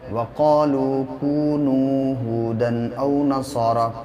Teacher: جتنا قا کو کھینچیں گے اتنا لو کو بھی کھینچیں گے